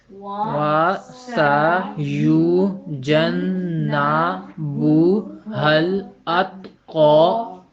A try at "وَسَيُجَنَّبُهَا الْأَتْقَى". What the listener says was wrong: اب آپ یہ دیکھیے کہ ہم نے پڑھا تھا نا کہ جس حرف پہ شد آتا ہے اس کو تھوڑا سا دبا کے پڑھتے ہیں. آپ نے دبا کے پڑھا نہیں پڑھا نا، کوئی بات نہیں. اسی طرح سین جو ہے اس کی ادائیگی میں سیٹی کا تاثر.